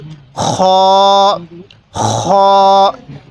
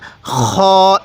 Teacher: গলার যেখানে গড়গড়া করি কুলি করার সময় এই সেই জায়গা থেকে